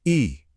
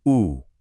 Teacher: अग्र, जिसमें जीभ का अगला हिस्सा उठता है